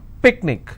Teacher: picnic i will stress on pick